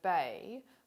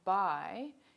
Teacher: three australian english diphthongs have e as their end point these are front raising diphthongs so in the vowel in the word bay the tongue starts